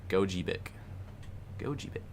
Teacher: Emphasis on second syllable